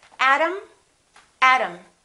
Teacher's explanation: a is reduced therefore they are the same sound and remember t between two vowels sounds exactly like the d